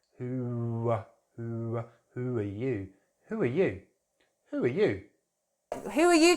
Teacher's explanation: we're going to add a w in between the two words.